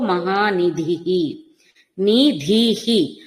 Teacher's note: మహాప్రాణ ధకారం తీసుకుంటూనే మళ్ళీ విసర్గ కూడా పలకాలి